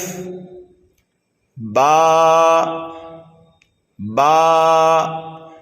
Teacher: ایک چیز اور آپ سمجھیے، دیکھیے الف کے علاوہ دوسرے حرف جو اردو میں لکھے ہوئے ہیں ہرے کلر میں، تو یہاں با کے ساتھ میں ایک الف بھی لکھا ہوا ہے، تو جب با کو ہم پڑھیں گے تو ایک الف کے برابر کھینچ کر کے پڑھیں گے